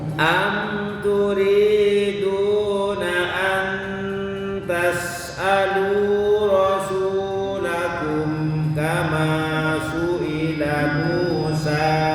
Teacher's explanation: Ini panjangnya semuanya dua harkat nih. Turi, du, lu, su, kama, ma, semuanya dua harkat, dua ketukan.